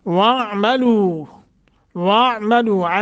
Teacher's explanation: لو کو لمبا کرنا ہے، حروف مدہ ہے، 1 سیکنڈ کی مد کر کے یا 1 الف کے برابر